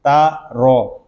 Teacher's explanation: تا کو باریک پڑھیں گے، اس کو تورو نہیں پڑھیں گے